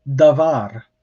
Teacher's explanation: we put the stress on here the second syllable the var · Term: accented